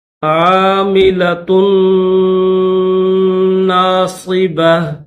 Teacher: یہاں پر غنہ بھی کیا جائے گا کیونکہ نون کے اوپر تشدید ہے، تو غنہ کر کے پڑھیں گے۔